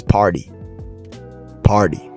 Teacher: The American accent in most word in most cases the T becomes a D. So party becomes party.